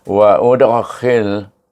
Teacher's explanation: Waudhil bermula dengan wau alif wa hamzah wa bertemu dengan dal yang sukun hendaklah dibaca. Oleh kerana dal tu berada di tengah kalimah dibacakan qalqalah sughra.